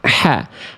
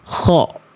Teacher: pangkal lidah terhampar tipis. H kecil ha. Kalau ko pangkal terangkat ko. Ah itu membuat huruf tebal, karakternya tebal ya. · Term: istifal